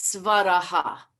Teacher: Svaraha begins with a dental sibilant sound, svaraha. So the H with a dot under it, which is visarga, that has to have a change.